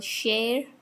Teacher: sh, it is fricative, voiceless, unaspirated